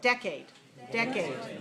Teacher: is big and the second is smaller now in this case the vowels are both clear but one of them is stronger that's the first one one of them is higher that's the first one one of · the stress in this word decade decade first syllable all right the first syllable is big and the second is smaller